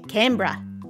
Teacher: if you're from Australia, you have like a more like bright A sound, you say Canberra.